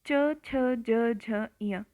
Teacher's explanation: आपकी जो जीभ है ना, वो आपके तालु को टच कर रही है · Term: तालव्य